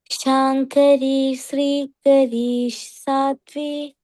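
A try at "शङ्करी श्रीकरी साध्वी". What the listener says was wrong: And it is not Sri, but Shri.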